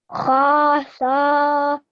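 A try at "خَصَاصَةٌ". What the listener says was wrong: Make the kha a bit shorter because it was more than 1 second.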